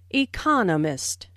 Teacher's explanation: the stress on the second syllable